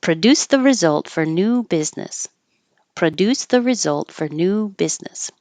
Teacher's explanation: instead of saying for perfectly, you can make it a little lazier and say fur